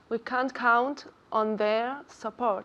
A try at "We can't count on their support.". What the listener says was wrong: Good. Has dicho there. Perfectamente. Ahora lo tienes.